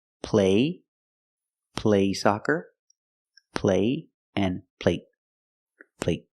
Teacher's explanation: the stop T at the end makes the long A a little shorter.